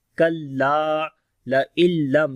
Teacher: نون ساکن کے بعد لام آ گیا، ادغام بغیر غننے کے کریں گے، پھر میم کے اوپر اظہار شفوی ہے. · کاف کو باریک پڑھیں گے، لا کو لمبا کریں گے، الف مدہ ہے یہاں پر.